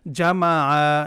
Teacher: আপনারাও কেউ কিন্তু টান দিবেন না, জামা আ এভাবে তাড়াতাড়ি পড়বেন